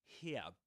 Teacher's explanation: And here in American English, British English, here, without pronouncing the final R